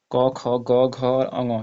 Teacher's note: तो इसमें क वर्ग के जितने भी हैं ये सब के सब क, ख, ग, घ और अ, ये जो है कंठ से इनका उच्चारण होता है